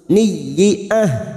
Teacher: Amaniyah, huruf ya lagi yang bertasdid hanya masuk. Niyah, huruf ha sukun yang harus bertenaga. Jangan lemes ya, karena nanti bisa terjadi ha.